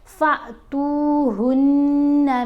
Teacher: فا کو جھٹکا دے کر پڑھیں گے، فا کو یہاں پر ہم نے لمبا کر کے نہیں پڑھنا، چھوٹی آواز بنانی ہے، کیونکہ یہ جو الف ہے یہ الف نہیں حمزہ پڑھا جاتا ہے جب الف کے اوپر کوئی موو آ جائے۔